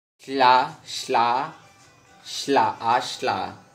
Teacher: alveolar voiceless lateral fricative